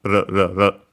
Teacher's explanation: Japanese doesn't have the L sound, it becomes Japanese R, even though L can be a variant of that, but the most common one is a tap flap